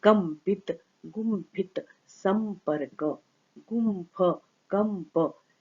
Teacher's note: पवर्ग का सवर्ण अनुनासिक होगा म, तो ये अनुस्वार की जगह पर हो गया म